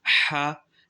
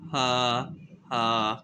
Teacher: This ha comes out from the mid throat, ha, and second ha, this ha comes out from the bottom throat